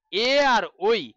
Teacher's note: তার মানে এ আর ওই এই দুটো বর্ণের উচ্চারণ স্থান হয়ে গেল কণ্ঠ তালু।